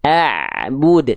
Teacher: Abud tipiskan sedikit ngalir suaranya Jangan jadi Hamzah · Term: Ain